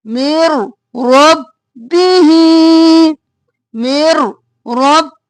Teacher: فتلقى آدم من ربه یہاں پہ من ربه نہیں کریں گے ادغام بلا غنہ میم کو را میں مدغم کیا بغیر غنہ کے مر رب بھی اور ہی کو کھینچیں گے مر رب مر